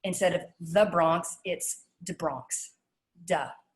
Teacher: so um instead of the bronx it's de bronx duh so the major consonants i want you to think about for new york are t's becoming d's sometimes th's becoming d's dropping the rs at the end of words when they're preceded